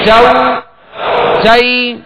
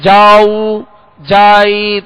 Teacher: تو جیم جو زبر ہے وہ کھینچ جاتا ہے، دراز ہو جاتا ہے